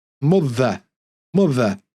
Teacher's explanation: our accent is non-rhotic, which means we don't pronounce the R, especially at the end of words and with vowel sounds.